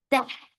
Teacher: Ta is very sharp. No flow of sound